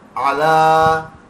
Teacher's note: عین درمیان حلق سے، لا کھینچیں گے، آلے نہیں ہے آلی.